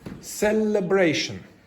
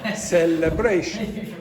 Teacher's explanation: you have primary stress on the third syllable, red. You have secondary stress on the first celebration.